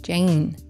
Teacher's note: slight yeah and when we say the name Jane in English we tend to pronounce it with this very slight Y sound just before the N